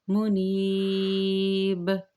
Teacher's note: اب چونکہ آیت مکمل ہو رہی ہے، میں وقفاً کیسے پڑھوں گی، وقفاً منیب۔ پہلی بات ہے کہ با کے اوپر جزم آ جائے گی، وقف کی صورت میں قلقلہ ہوگا، منیب، یہ میں رک گئی۔